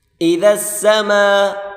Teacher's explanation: میم کے اوپر مد ہے، بڑی مد، اس کو کھینچ کر پڑھیں گے · ہلکی سی زبان باہر نکال کر پڑھیں، ذال کو سین کے ساتھ ملا کر پڑھیں گے